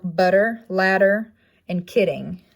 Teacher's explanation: looks like an upside down j it comes into effect or it taps the alveolar ridge as the placement it is voiced and it's in words which is like butter ladder and kidding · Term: alveolar tap